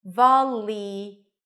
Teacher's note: The dark L is somewhere between an L, an R, and a W. · This is a light L. It's still a little heavy, especially for some speakers, volley, but it's not a dark L. as it is in the word ball.